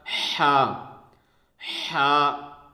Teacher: حلق جو ہے وہ اس کے بیچ کے حصے سے نکلے گا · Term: وسط حلق